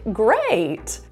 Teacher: down on that word if it's a one-syllable word like great you'll sing to a higher note and then a lower note within that one word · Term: slide